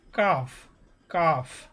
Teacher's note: জিহ্বার গড়া থেকে একটু আগে বাড়িয়া তার বরাবর উপরে তালুর সঙ্গে লাগাইয়া মধ্যখান পেছানো কাফ